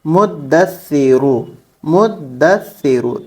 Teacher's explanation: دال پہ بھی تشدید ہے اور سا پہ بھی تشدید ہے، تو ہمیں میم کو دال سے پہلے ملانا ہوگا، پھر دال کو سا سے ملانا ہوگا